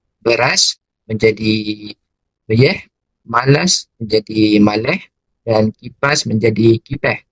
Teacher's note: Namun begitu, dialek Perak Tengah seperti yang digunakan di dalam filem Kampung Pisang Musikal Raya turut menunjukkan perbezaan iaitu mengalami perubahan dari lingkungan akhir kata sesuatu perkataan dari as kepada urutan ah